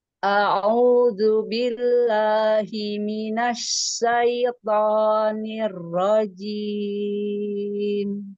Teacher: Asyaitan keluarkan jangan terbagi ke hidung